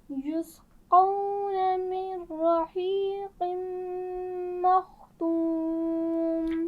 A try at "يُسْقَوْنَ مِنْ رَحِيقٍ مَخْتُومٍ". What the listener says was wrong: لین کو واضح کر کے ادا کیجیے، بہت جلدی مت کیجیے. یسقون من رحیق.